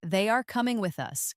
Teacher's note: Now, second, they are coming with us. Let your voice fall gently at the end. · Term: intonation